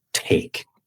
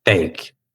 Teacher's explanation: aspiramos el sonido con aire, cuando está al comienzo o al principio de la palabra.